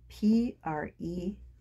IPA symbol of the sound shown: p p